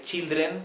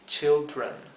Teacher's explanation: la lengua hacia atrás y se hace la r del inglés. Children.